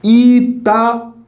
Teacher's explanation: esse U não é fraco, ele é muito forte. Inclusive é a sílaba tônica. Itaú. Isso aqui é forte, bastante forte.